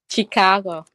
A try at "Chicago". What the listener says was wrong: Shh. It's a SH sound chứ không có phải là CH. Chicago. Người Việt mình hay nói là Chicago nha.